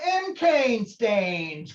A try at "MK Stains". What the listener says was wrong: It sounded like you said M. Cane Stains. You really gotta enunciate that.